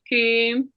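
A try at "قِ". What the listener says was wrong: No, I said prevent the circling. I said when you pronounce it, don't circle your lips. When I say qi, see? Qi. So all the alphabet with kasra. When I say hamza, kasra, e, like we say ihdina, e, I don't narrow my lips and I lower my jaw little.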